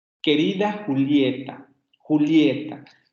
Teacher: Vean cómo en este vocativo la inflexión final es descendente. Querida Julieta, Julieta, va disminuyendo la tonicidad en la última sílaba.